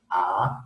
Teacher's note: los labios se abren más que en cualquier otra articulación y la lengua se mantiene plana y en reposo en el centro